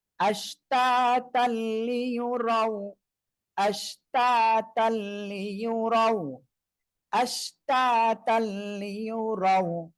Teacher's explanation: আশ তা, তা লাম 2 জবর তাল, তানবিনের পরে ঈদগামে বেলাগুন্নার অক্ষর লাম আসছে, গুন্না ছাড়া মিলিয়ে পড়বেন। আশতাতাল, তা লাম 2 জবর তাল, লাম জের ইয়া পেশিও, লিও, রাও জবর রাও, লিও রাও।